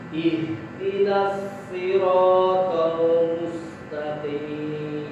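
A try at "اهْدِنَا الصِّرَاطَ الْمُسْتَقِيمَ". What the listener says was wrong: Nah, farqu baina as-sad was sin. Bedakan sad. Sad tebal, sin terkik tipis. Ihdinas siratal mustaqim. Angkat sedikit posisi lidah di sad.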